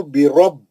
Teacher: حمزہ الف پہ زبر ہے، مد اصلی ہے. ذو برب با کو سختی سے پڑھیں گے، تشدید ہے